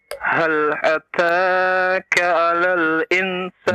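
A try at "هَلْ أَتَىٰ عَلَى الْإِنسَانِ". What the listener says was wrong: Jangan ditambah-tambah hurufnya ya, yang tidak ada.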